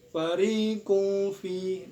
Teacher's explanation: cara bacaan samar-samar dan dengung yang seimbang. Ketika membaca huruf qaf langsung bersiap masuk ke huruf fa. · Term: ikhfa ausat